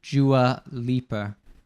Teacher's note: you have like the D turning into like a J sound, Dua. And then what's it called? · the R sound at the end of Lipa. It's an intrusive R.